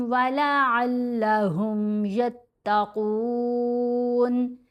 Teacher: मीम पर गुन्ना करेंगे, गुन्ना असल है।